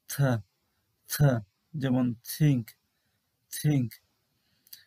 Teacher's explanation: থয়ের উচ্চারণ ইংরেজিতে একটু আলাদাভাবে করা হয়। উপরের পাটির দাঁতের নিচে জিভকে রেখে তারপর দাঁত এবং জিভের মাঝখানে একটু গ্যাপ করে বাতাস বের করে এই উচ্চারণ করা হয়